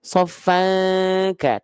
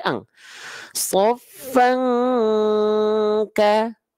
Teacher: eh Masyaallah ada fatahtain berjumpa dengan Kaf ini ikhfa ikhfa Hakiki ikhfa hakikinya kuat dengungannya karena hurufnya Kaf